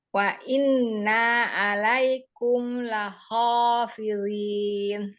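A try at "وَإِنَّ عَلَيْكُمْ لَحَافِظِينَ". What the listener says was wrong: Laha, bukan lahu, laha.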